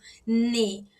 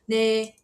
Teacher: A diferença é que o N coreano, ele puxa mais pro D. Então, quando você vê lá no dorama, a pessoa falando de, eu tô falando ne.